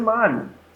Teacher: O I sai muito fraquinho, o O sai mais forte.